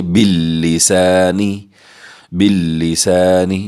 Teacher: باللسانی سین کو سیٹی کی آواز سے پڑھیں گے، الف ساکن ہے یہاں الف مدہ کریں گے